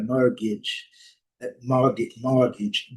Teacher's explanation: No inglês britânico não pronunciamos o R, né? Está antes do T aqui, então é mortgage. Mortgage, mortgage, nó prolongado, né?